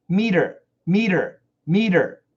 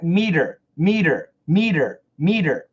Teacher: M-E-T-E-R is a flap T. Meter, meter, meter. And you can hear that there's a touch.